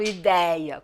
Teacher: eu falo ideia com som aberto eu falo ideia porque a palavra ideia não nunca teve acento